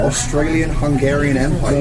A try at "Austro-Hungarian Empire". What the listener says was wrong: Not Australian. Austro-Hungarian.